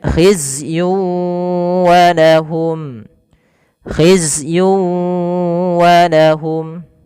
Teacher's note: Di sini ada tanwin melafal yun ketemu dengan wau. Maka cara membacanya masukkan tanwin kepada huruf wau. Tidak lagi hizzyun walahum tapi langsung wau.